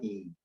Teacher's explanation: 고모음의 평순모음의 전설모음 찾으세요